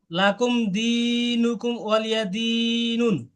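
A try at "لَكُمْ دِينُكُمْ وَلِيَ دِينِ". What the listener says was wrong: হ্যাঁ এখন এটা একটু স্লো মোশনে বলেন, খুব স্পিড হয়ে যাচ্ছে।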